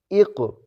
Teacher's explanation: قوف کو کلکلا کریں گے اس لیے یوں پڑھ رہا ہوں اق